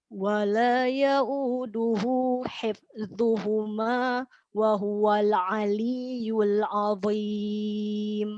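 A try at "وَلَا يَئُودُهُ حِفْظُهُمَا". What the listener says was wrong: Oke, pada kata hifdzuhuma, kasroh di huruf ha-nya jangan ke hif jadi miring ke bunyi tapi sempurna kasrohnya. Wala ya'uduhu hif ya, diulangi. Hanya tadi ada beberapa di huruf sukun yang bukan huruf qalqalah tapi dipantulkan. Nah, sebaiknya itu diperbaiki, ya, diulang-ulang di rumah seperti tadi nun, kemudian hifdzuhuma jangan hifdzuhuma.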